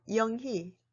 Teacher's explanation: The vowel 의 is combined with the limited consonants, and the most frequently combined consonant is h. When the vowel 의 is combined with the consonant h, 의 is also pronounced as 이.